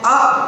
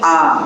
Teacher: अब देखिए पहली बार जब हम बोले आ तो उसमें समय कम लगा, लेकिन दोबारा हम जब बोले आ तो हमारा पहली बार से दूसरी बार बोलने में जो समय लगा वो दुगना था। यानी हर्ष स्वर से दीर्घ स्वर को बोलने का जो समय होता है वो दुगना हो जाता है